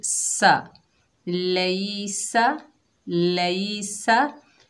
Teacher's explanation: सीन के ऊपर ज़बर बगैर खींचे पढ़ेंगे। सीन सख्ती और सीटी वाला हरूफ है, सख्ती से अदा करेंगे।